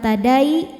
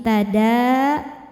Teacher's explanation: Jadi kalau berhenti dalnya tetap dua bukan tadai tapi tada. Dalnya dua harakat walaupun berhenti. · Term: mad thobi'i muqaddar